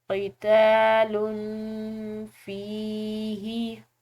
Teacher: یا ساکن کی وجہ سے فا کو لمبا ادا کریں گے۔